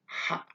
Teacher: H-nya halus, seperti kata halus. H halus, lokasi keluarnya huruf atau yang disebut dengan makhraj, ya, ada di tengah, ya, daripada tenggorokan kita.